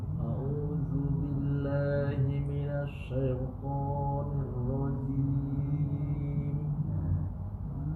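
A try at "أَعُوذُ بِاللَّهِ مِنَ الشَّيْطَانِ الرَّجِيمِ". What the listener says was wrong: Sedikit lagi Pak, mulutnya agak sedikit terbuka. Minasyaitonir rajim. Sedikit di sini warnanya Pak. Ketika membaca syaito di sini banyak nyeret. Apa itu nyeret? Ada yang baca syaito. Ah, salah ya. Tidak syaito, tapi syaito. Jelas ya? Syaito bukan syaito. Nah, ini banyak nih orang kita nih ketika baca syaito.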